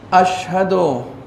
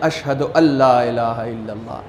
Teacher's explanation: یہ نون نہیں پڑھا جاتا، اس لام کے اوپر تشدید دیا جاتا ہے اور یہ الف ڈائریکٹ لام سے ملتا ہے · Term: ادغام